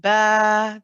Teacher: The light alif, you can see now the tongue is very rested. No part of the tongue is really lifting up or touching anything.